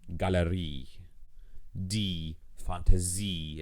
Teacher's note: in the cases where the IE makes an E sound at the end of a word like that, that E is the accented syllable